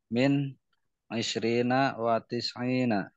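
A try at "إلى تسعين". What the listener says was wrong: Ila. Ila tis'ina bukan wa. Bacanya ila.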